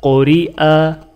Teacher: یہاں پر را کے نیچے زیر ہے تو لہٰذا را باریک پڑھی جائے گی